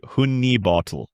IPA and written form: ˈhʌni ˈbɑːtəl (Honey Bottle)